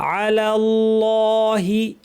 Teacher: আলা পাতলা আল্লাহ লামটা শুধু ভারী অনেকে পুরোটা ভারি করে ফেলেন আল্লাহি বলে ফেলেন এটা ঠিক আলাল্লাহি